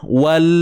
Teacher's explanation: Jangan lepaskan terlalu awal. Wal, tu nanti berlakulah apa bunyi yang tambahan yang disebut sebagai tawallud, bunyi beranak. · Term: tahan lidah